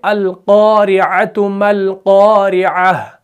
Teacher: अब इस कौफ को हमने मोटा भी पढ़ना है क्योंकि ये मुफख्खम है, इसको पुर पढ़ा जाता है, तो तभी हम इसको क्या करते हैं, मुंह भर के पढ़ते हैं।